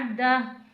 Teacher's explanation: मालम मालम वाऊ ज़बर व मालम व आइन को हलक से अदा करना है। अदा ऐन को हमजा नहीं बनाना। ऐन को ऐन की तरह हलक से अदा करके पढ़ना है।